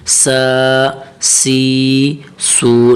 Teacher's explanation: سین کی اپنی آواز ہے، سین کی اپنی مخرج ہے، تو سین کو سیٹی کی آواز میں پڑھنا چاہیے